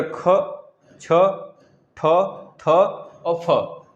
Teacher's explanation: जिनको बोलने में हमारे स्वर तंत्र में कंपन ना हो या फिर बहुत कम हो, उसे हम बोलते हैं अघोष। जैसे देखिए, क, बोलिए क, च, ट, त, प, नहीं हो रहा है ना, इस तरह ख, छ, ठ, थ और फ, इस तरह बोलेंगे तो उसमें जो हमारे स्वर तंत्र में यहाँ पे कंपन होता है वह बिल्कुल भी ना के बराबर होगा।